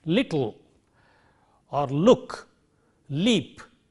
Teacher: so this is a lateral sound which is a voiced sound